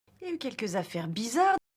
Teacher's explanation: So it's not simply that it's spoken fast. No, the il actually isn't pronounced at all here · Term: contracted pronunciation